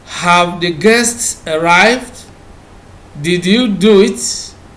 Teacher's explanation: You can see that the yes or no questions always use the rising tone.